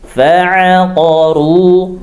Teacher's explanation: digetarkan ujung lidahnya huruf ra ya pangkal lidahnya dinaikkan